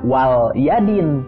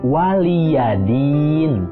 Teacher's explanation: lamnya itu adalah lam dengan harokat kasroh. Jadi bukan lam sukun. Jangan dibaca wal yadin, tapi waliyadin.